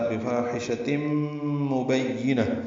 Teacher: تنوین کے بعد میم آنے کی وجہ سے ادغام ہوگا غنے کے ساتھ. بفاحشۃ مبینہ با کو یا سے ملائیں گے، یا کو جلدی ادا کریں گے، نون کو طائر مربوطہ سے ملا دیں گے، ہا ساکن ہو جائے گی وقفاً، یہ وقف بالابدال ہوگا.